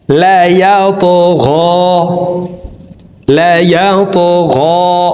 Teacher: তো আমরা এই তকে উপরের দিকে ধাবিত করে ধাক্কা দিয়ে উচ্চারণ করব। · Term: কলকলার হরফ